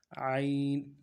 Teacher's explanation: زبان کا بیچ بھی اٹھائیں گے موٹا کرنے کے لیے، اور گلے کے اندر سے پڑھیں گے۔